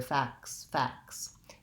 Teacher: sometimes that t sound in this word in particular will drop out and people say it more like facts facts rather than facts